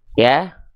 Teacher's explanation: Huruf ya dilafalkan makhrajnya dari yang namanya istilahnya wastul lisan